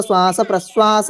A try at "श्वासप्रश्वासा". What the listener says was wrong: अब श्वास प्रश्वास नहीं है, श्वास प्रश्वासा। हाँ, दीर्घ करना पड़ेगा, ठीक है ना?